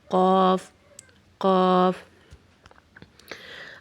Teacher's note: غین ہمارے گلے کے اوپر والے حصے سے ادا ہوگا جہاں سے ہم نے خا کو بھی ادا کیا ہے، اور قاف ہمارے زبان کی جڑ کو اور اوپر والے تالو کو آپس میں ملانے سے ادا ہوگا